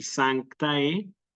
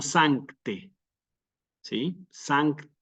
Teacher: tenemos que pronunciar esa a con una e en el latín eclesiástico como una e · estamos en presencia de un diptongo que es el diptongo a e y que se pronuncia siempre como una e en el latín eclesiástico